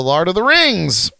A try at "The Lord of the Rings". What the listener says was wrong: You said lard.